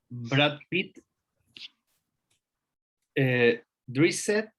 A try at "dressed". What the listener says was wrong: El verbo se pronuncia dress, pero no me puedes decir dressed porque ya vimos que nunca era it. No existe el it.